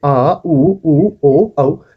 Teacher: पश्च स्वर। मतलब अपनी जीभ के पीछे वाले हिस्से से अ, उ, उ, ओ, औ का स्वर जो है उत्पन्न होता है